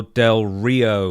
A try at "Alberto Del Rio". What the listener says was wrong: You got to roll the R. Del Rio.